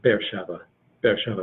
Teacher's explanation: There's a slight pause between these two e's, be'er, but they usually say it fast enough you don't hear it.